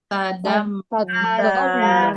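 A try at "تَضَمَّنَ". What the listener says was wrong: pakai tasdid ya.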